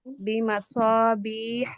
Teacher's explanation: صو کو پر کیجیے اور بیحا میں منہ کو باریک کیجیے